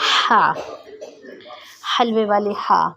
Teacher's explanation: زبان کی جڑ کو حلق کی طرف مضبوطی سے دباتے ہوئے باریک اور رگڑ کھاتی ہوئی آواز میں ادا کریں، ٹھیک ہے۔ یعنی جو حلق کا درمیان ہے، نارملی طور پر حلق کے 3 حصے ہیں، ایک ٹھوڑی کے نیچے، ایک تھوڑا ٹھوڑی سے اور مزید زیادہ نیچے، درمیان میں حلق کا درمیان ہو جائے گا، ٹھیک ہے۔